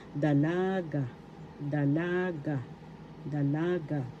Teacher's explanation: The accent is in the second syllable, dalaga, dalaga, dalaga.